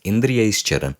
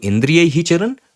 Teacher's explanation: So due to this chutva sandhi, the visarga that became sakara will again undergo a modification and the sakara will change into shakara